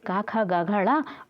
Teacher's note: कंठ व्यंजन है, जो हमारे गले से बोले जाते हैं